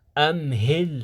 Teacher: الهاء يخرج من أقصى الحلق وكذلك الهمزة